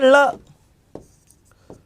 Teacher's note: जब यहां पर रास्ता रुक गया क्योंकि जीवा मुड़ के मसूड़ों को छुएगी, ऐसे हो गई, यहां टकरा के आसपास से निकलता है। जीवा के आसपास या अगल बगल से हवा निकलती है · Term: पार्श्विक